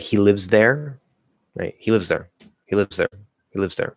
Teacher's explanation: you don't actually have to say like air you can kind of say more like er maybe not a complete er like a partial like a little